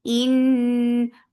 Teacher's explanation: This kunna is akmal. So keep the sound in your nose for a longer time.